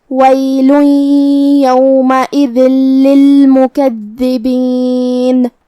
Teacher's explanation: ہم یہ تنوین کو لام میں ملا کے بغیر غنہ سے لیکن تشدید کے ساتھ یہ حکم کو ادا کریں گے · کلمت للمکذبین میں دال کے تشدید کا دھیان رہے. آخر میں ہم نون پہ رکیں گے تو اس پہ جزم سے رکیں گے، لہذا ہم نون کو ظاہر کریں گے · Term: ادغام